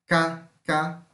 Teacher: O K, que é uma oclusiva, velar, surda.